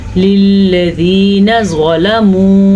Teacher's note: ज़्वा को पुर पढ़ना है, ये हुरूफ़ मुस्तालिया में से है